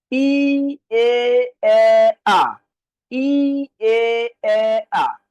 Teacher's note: যেমন দেখেন, ই, এ, এ, আ, ই, এ, এ, আ। ঠোঁটটা ছোট থেকে বড় হচ্ছে, জিহ্বাটা উপর থেকে নিচের দিকে নামতেছে।